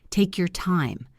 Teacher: Listen to the stress on the word time.